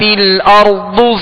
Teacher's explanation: ارض اور را کو پر پڑھیں گے، ضاد کو پر پڑھیں گے